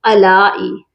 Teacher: آ کو ہم نے کھینچ کر پڑھنا ہے کیونکہ اس کے اوپر بھی کھڑی زبر ہے